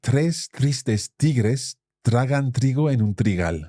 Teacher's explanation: Every one of those R's is that strong R sound, the same R sound that we hear with a double R, like carro.